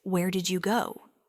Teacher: For a wh question, it's where did you go? With that clear fall on go. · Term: falling intonation